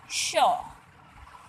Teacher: जो मूर्धन्य स है मूर्धा से आवाज़ निकालते हैं